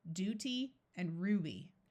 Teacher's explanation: after the D and the r we switch to the oo sound because it's easier to say